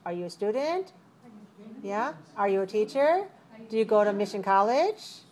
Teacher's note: The yes-no type of question uses rising intonation.